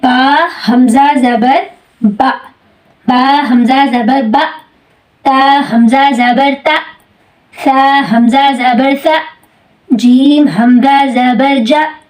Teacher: آواز اونچی بھی ہو گئی, آواز میں سختی بھی پیدا ہوگی اور آواز جلدی بند ہو جاتی ہے اور سانس جو ہے جاری نہیں رہتا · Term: صفت شدت